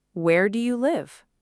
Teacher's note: Your voice should go down on live, not up. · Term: falling intonation